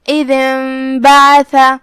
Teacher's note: اقلاب کا معنی ہے حرف کو پلٹ دینا، لہذا ہم یہ نون کو میم میں پلٹ کے غنہ کے ساتھ یہ حکم کو ادا کریں گے